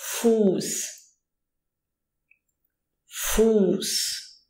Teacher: when there is a vowel before that SZ, it prolongs the vowel. So, for example, we say Fuß.